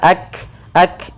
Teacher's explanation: kaf sukun itu punya sifat hamas, yaitu mengalirnya udara atau mengalirnya nafas kita. Ak sedikit saja.